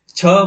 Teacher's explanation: छ बोलेंगे तो अधिक वायु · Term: महाप्राण